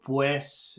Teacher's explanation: when in the proximity of another vowel the Spanish u sounds very much like the English w